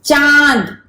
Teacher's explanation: तो आपके मुंह से भी साउंड आ रहा है और नाक का भी यूज हो रहा है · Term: अनुनासिक